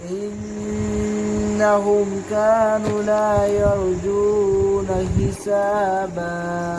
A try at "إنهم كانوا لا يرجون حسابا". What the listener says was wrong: अब इसमें आपसे गलती होगी कानू कानू वो लंबी दोबारा पढ़े